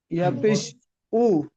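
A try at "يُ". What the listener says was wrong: ইয়া পেশ উ না, ইয়া পেশ ইউ, ইউ ইউ, ইয়া পেশ ইউ, ইউ ইউ, ইয়া পেশ ইউ, ইউ ইউ, উ না, উ হচ্ছে হামজা পেশ উ। এই যে হামজা, এটা হচ্ছে উ। আর ইয়া পেশ ইউ, ইউ ইউ।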